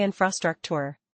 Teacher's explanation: >> Infrastructure has four syllables. >> Stress it on the first syllable.